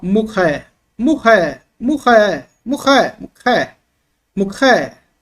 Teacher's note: era uma letra aspirada e gutural, é da garganta, esse som arranhado assim.